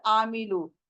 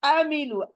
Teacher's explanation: हलक के बीच से आइन का निकलना जरूरी है